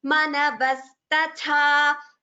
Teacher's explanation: The first is a alpa prana, the second tha is a mahaprana.